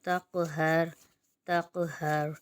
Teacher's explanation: قاف حروف قلقلہ میں سے ہے تو یہاں پر قلقلہ بھی ہوگا کیونکہ یہ ساکن ہو رہا ہے اور اس کی ادائیگی بھی موٹی ہوگی